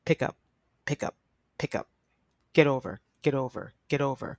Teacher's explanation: we often will link phrasal verbs which means it almost sounds like one word